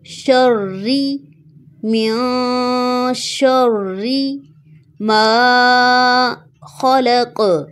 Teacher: را کے نیچے زیر ہے، اس کو باریک پڑھیں گے